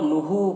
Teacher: ہو میں واو مدہ ہے، اسے ایک الف کے برابر کھینچیں گے